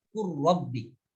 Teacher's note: Idghamkan dengan idgham mutamasilain dan mutajanisain ketika huruf yang pertama sukun kepada huruf yang berikutnya yang berharkat. Misalnya lafaz qurrabbi, lamnya sukun kemudian diidghamkan kepada ra, qurrabbi, atau balla, lamnya sukun kemudian ke depannya ada huruf lam lagi, balla.